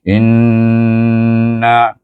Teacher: Nun bertasdik baca suku kata in itu mesti di wajibul gunahkan dia dengungkan dia dua harakat